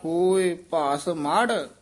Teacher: ਮੜ ਇਹ ਵੱਖਰਾ ਪਾਠ ਸੰਪਰਦਾ ਚ ਕਰਾਇਆ ਜਾਂਦਾ ਹੋਇ ਭਾਸ ਮੜ ਭਾਸ ਪੋਲਾ ਬੋਲਣਾ ਮੜ ਭਾਰਾ ਬੋਲਣਾ ਭਸਮੜ ਨਹੀਂ ਕਹਿਣਾ ਹੋਇ ਭਾਸ ਮੜ ਭਉਰ ਸਿਧਾਇਆ ਆਪੀ ਨੈ ਭੋਗ